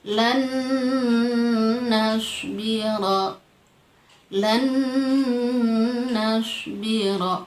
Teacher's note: Kalau dia ketemunya nun karena di sana ada nunnya juga bertasydid, harus didengung, ditahan 1 alif 2 harokat